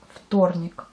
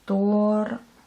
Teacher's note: Malgré qu'on dit F, on écrit un V.